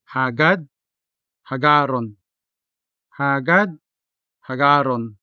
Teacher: When conjugated to hagaron, its passive voice counterpart, the consonant da in hagad turns into the consonant ra in hagaron